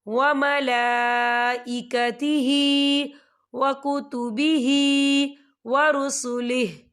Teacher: کل آمن باللہ وملائکتہ، یہ دیکھیں وملا لام کے اوپر کھڑی حرکات ہے اور اس پر مد بھی ہے تو ہم اسے 4 حرکت کے برابر کھینچے پڑھیں گے